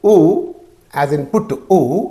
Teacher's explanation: pallet near the tongue is near back in the mouth and the lips are rounded so these three things are there near close near back rounded